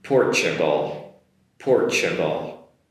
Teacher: The T comes across as a CH sound.